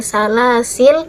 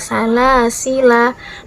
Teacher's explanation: waqaf pada lam yang mati Bukan pada Alif setelahnya yaitu pada salasil dan yang ka wakaf pada Alif setelah lam